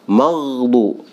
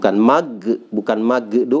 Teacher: Kadang magdu itu salah, harusnya maghdu ya. Jadi ada semacam gesekan fibra ya di tenggorokan atas ini.